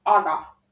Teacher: the single k disappears due to the kpt change